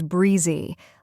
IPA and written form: ˈbriː.zi (Breezy)